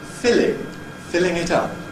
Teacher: as soon as I add ‘-ing’, ‘filling’ [ˈfɪlɪŋ], ‘filling [ˈfɪlɪŋ] it up’, notice the /l/ is then Clear